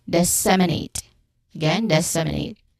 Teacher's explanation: Stress the second syllable sem.